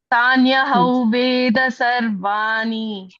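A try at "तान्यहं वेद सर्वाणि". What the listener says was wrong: Sarvani, not na, ni it is. Ni. We can hear it as na, ni. It is ni.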